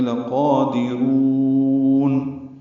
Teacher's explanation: لقادرون لام کو جلدی پڑھنا ہے، قاف پر پڑھیں گے، 2 حرکات لمبا کریں گے، دال باریک ہے، را پر ہے اور را کو لمبا کریں گے